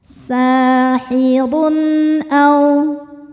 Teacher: Run ada hukum izhar halqi karena ada tanwin dhammah menghadapi huruf halqi yaitu hamzah. Cara bacanya tanwin ini dibaca n jelas.